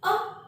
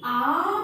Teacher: अ को बोलने में बहुत समय नहीं लगेगा, लेकिन आ बोलने में इस अ से दुगना टाइम लगता है